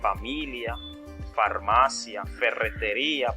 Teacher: que son labios dentales que aquí lo que sucede es que se colocan los dientes superiores sobre el labio inferior